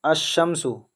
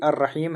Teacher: لام کا تلفظ نہیں ہوتا، یعنی لام پڑھا نہیں جاتا ہے، وہ سائلنٹ ہو جاتا ہے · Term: حروف شمسی